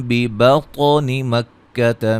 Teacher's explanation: نون ساکن کا اقلاب ہے، نون کو میم سے بدل کے پڑھیں گے